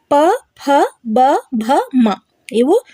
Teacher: ತುಟಿಯ ಸಹಾಯದಿಂದ ಹುಟ್ಟುತ್ತವೆ ಹಾಗಾಗಿ ಇವುಗಳನ್ನ ಓಷ್ಠ ವರ್ಣಗಳು